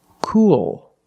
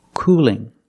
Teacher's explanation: cool has a dark L at the end but cooling has a light L